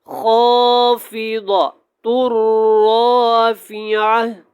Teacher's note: یہاں پہ را جو ہے یہ پر ہوگا، موٹا پڑھا جائے گا، یہاں پہ خا بھی موٹا پڑھا جائے گا اور یہ جو ضاد ہے اس کو بھی موٹا پڑھنا ہے۔